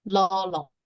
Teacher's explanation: So next word, la, meaning healthy, and you could see here a apostrophe here, la, and the first la can be sounded as la, even tone, and the next one, the laq, is the falling tone. So it should be pronounced as la.